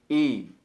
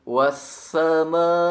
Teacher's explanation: bunyikan huruf hamzah dengan memberikan penekanan bagian bawah tenggorokan